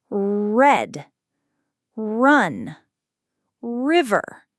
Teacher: your tongue pulls back and bunches up in the middle of your mouth without touching the roof. It creates a bunched or retroflexed sound. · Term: American R sound